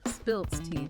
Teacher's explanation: the form spilt, ending with a voiceless T sound, is also very common